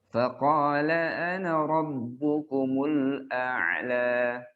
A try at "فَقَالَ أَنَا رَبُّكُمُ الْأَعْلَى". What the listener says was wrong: Pokoknya masih kurang tebal. Huruf isti'la yang setelahnya alif, itu tebalnya maksimal. Dia marotibul kimia dia paling tinggi. Faqala ana. Faqala.